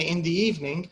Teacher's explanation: When we say in the evening, evening is stressed, but in the it's not stressed.